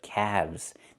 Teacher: Not calves, but calves. The L is silent and we pronounce the V sound with vibration plus the Z sound